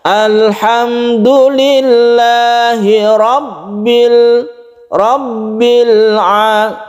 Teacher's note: lamnya itu tidak terlalu ditekan dan tidak terlalu dilepas karena dia punya sifat tawasut atau tengah-tengah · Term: tawassut